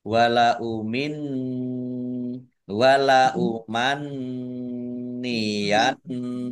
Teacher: Nun tasdid ada 2 nun tasdid, ini dibaca gunnah semua ya, dibaca mendengung semua, ditahan masing-masing 2 kira-kira 2 harokat biar tampak dengungannya. · Nun tasdid dibaca gunnah atau mendengung, ditahan 2 harokat. Mim sukun bertemu dengan huruf wawu, bacaan idhar safawi dibaca jelas.